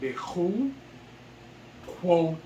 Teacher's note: since the yod is at the end, the patak is a long A sound. I thought it was always an I sound.